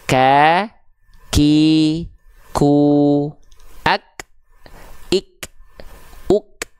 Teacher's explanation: Kaf itu mengalirkan sedikit nafas sifatnya hams